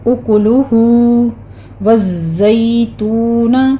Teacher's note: آگے اکلہ میں ہونٹوں کو بالکل گول رکھیے، راؤنڈ رکھنا ہے آپ نے تاکہ تینوں کے اوپر ضمہ ہے، آگے ہمارے پاس ضمہ مقلوبہ ہے، تو ضمہ مقلوبہ پہ ہماری ہو رہی ہے مد صلہ صغریٰ ہو رہی ہے، اس کو آپ نے 2 کاؤنٹ کر لینا ہے۔